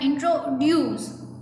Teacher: the word introduce is pronounced with a stress at the end, so it sounds like introduce.